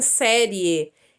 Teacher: Esse I não é muito bem pronunciado, mas o E é pronunciado abertamente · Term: ditongo crescente